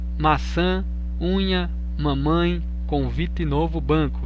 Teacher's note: viu como parece que a gente fica meio fanho isso é uma vogal nasal quando ficamos resfriados com nariz entupido as vogais nasais ficam alterados · quando são produzidas o ar passa pelo nariz resultando num som anasalado